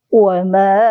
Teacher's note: Rasulun ada ikhfa, kita dengungkan di situ.